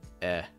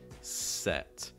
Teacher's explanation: For the sound, like in set, you want your lips to go this way. The front of your tongue is high, and it should sound like eh. Notice my mouth is not very wide. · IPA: ɛ